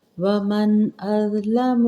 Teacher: ومن نون ساکن ہے، اس کے بعد حمزہ آ رہی ہے تو اظہار ہوگا